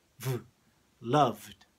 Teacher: V is the sound here that we call voiced. So that v sound, v, you can feel it here vibrating in your throat.